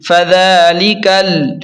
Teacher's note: لام زیر لی، کاف لام زبر کل، فذالکل، کاف کو ڈائریکٹ لام کے ساتھ ملا کر پڑھیں گے سختی سے کیونکہ لام پر شد ہے، یہ بیچ والا الف نہیں پڑھیں گے، فذالکل۔